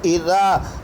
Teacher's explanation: زال کہہ رہا مجھے تھوڑا سا کھینچو ایک الف کی مقدار میں